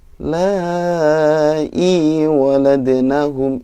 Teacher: i-nya panjang 2 harokat